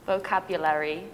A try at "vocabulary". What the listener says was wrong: So there's vocabulary. One more syllable.